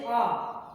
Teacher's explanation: आ कहने से हमारा दोनों ओठ ऊपर हो जाते हैं, यानी गोल नहीं होता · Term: आवृत्तमुखी